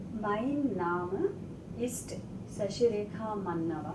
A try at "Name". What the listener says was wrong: Mein Name ist. Name. Not Nam. Name.